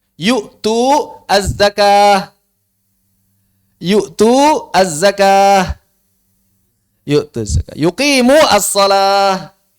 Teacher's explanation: Dihilangkan madnya. Mau dia kasrah, mau dia fathah, mau dia dhammah, pokoknya madnya dihilangkan.